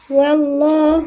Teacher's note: واللام لفظ جاء الله مفخمة لأن قبلها مفتوح